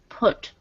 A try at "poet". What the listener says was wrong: Yeah, poet. Yeah, you want to make sure that poet is two syllables. Some people, sometimes non-native speakers will poet or poet, but it is poet.